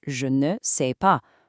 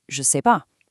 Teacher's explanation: In real spoken French, they almost always drop the ne in negative sentences. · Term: Dropping that ne